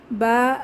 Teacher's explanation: মাদের হরফ এক আলিফ টেনে পড়বো